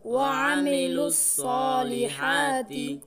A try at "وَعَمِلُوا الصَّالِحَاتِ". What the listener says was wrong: আমরা অনেকে পড়ার সময় আইনে টান দিয়ে ফেলাই, এখানে টান হবে না। হরকত এক জবর এক জের এক পেশকে হরকত বলে, হরকতের উচ্চারণ তাড়াতাড়ি করিয়ে পড়িতে হয়, এখানে টান হবে না।